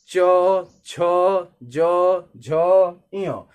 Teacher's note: जब हम बोल रहे हैं तो जीभ जो है तालू को टच कर रही है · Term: तालव्य